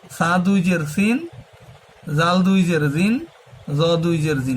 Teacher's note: জটাও নরম হবে, জ, সা, জাল আর এই জ, এই তিনটার মাখরাজ একই, তিনটাই নরম করে বলতে হবে। জিহ্বার আগা সামনের উপরে দুই দাঁতের আগার সঙ্গে লাগাইয়া জ, জ, জাল, সা, সা দুই জের সিন, জাল দুই জের জিন, জ দুই জের জিন, নরম করে, তিনটাই নরম হবে।